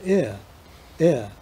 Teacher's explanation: a lax beginning gliding into a schwa, ear, which sounds fairly old-fashioned now. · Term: near